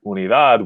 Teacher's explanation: the stress is falling on that last syllable, which means we don't need an accent mark.